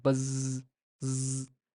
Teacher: that the S sound or the S sound is unvoiced while the z sound is voiced